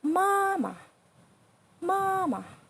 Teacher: the last one is the neutral tone which is the thumbless stone so just like pronounce very weak